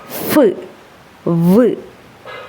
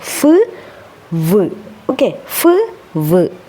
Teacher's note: sound are produced are called ലേബിയോന്തൽ sound ഓക്കേ അതായത് നമ്മുടെ ഈ പല്ല് മുകളിലുള്ള പല്ല് പാസീവ് ആണ് അത് അനങ്ങാണ്ട് നിൽക്കുകയാണ് അങ്ങോട്ടേക്ക് നമ്മുടെ താഴെയുള്ള ചുണ്ട് വരുകയാണ്